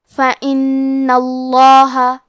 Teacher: کلمت فَإِنَّ میں نون پہ تشدید ہے لہذا ہمیں 2 حرف کے برابر نون کو پڑھنا ہے، اور کیونکہ تشدید زبر کا ہے لہذا ہمیں لفظ الجلالہ مطلب کلمت اللہ کے لام کو تفخیم سے مطلب موٹی آواز میں پڑھنا ہے.